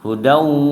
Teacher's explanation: hudau langsung masuk ke huruf wawunya, karena ketemu waw berdengung dia di situ